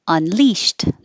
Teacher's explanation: unleashed with two syllables stress on the second syllable unleashed the ed sounds like a t unleashed and then immediately